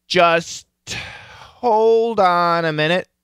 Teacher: So I'm using the aspiration from the T to start my H. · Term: aspirated